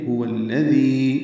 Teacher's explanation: هو الذي میں حق سے حلق سے ادا کریں گے جلدی اور معروف پڑھیں گے، واو کو الذی کی لام سے ملا دیں گے. هو الذی ذی یا مدہ ہے، 2 حرکات لمبا کریں گے، ذال کو نرمی سے پڑھیں گے.